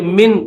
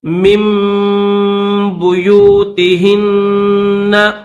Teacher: یہ جو نون ہے اس نون کی آواز نہیں نکالیں گے